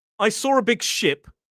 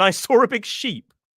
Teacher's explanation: Sheep has that long E vowel sound up towards the front of the mouth.